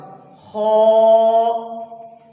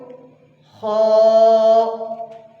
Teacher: خو گلا جہاں سے شروع ہو رہا ہے منہ کے اینڈ سے اور گلے کے سٹارٹ سے، خو موٹا کر کے پڑھیں گے